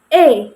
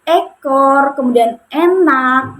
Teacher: vokal E ini ee posisi lidahnya itu berada pada madia atas kemudian menggunakan lidah bagian depan. Nah, ee posisi bibir saat mengucapkan E ini itu semi terbuka tetapi ee lebih lebih mendekati semi tertutup gitu.